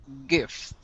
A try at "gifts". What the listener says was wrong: Okay, very good.